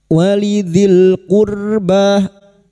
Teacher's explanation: Ra sukun yang didahului dumah dibaca tafkim